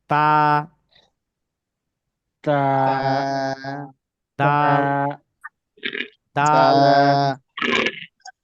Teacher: এবার জিহবার আগা, জিহবার আগা সামনের উপরের দুই দাঁতের গোড়ার সঙ্গে লাগাইতে হবে। জিহবার আগা সামনের উপরে দুই দাঁতের গোড়ার সঙ্গে লাগাইতে হবে।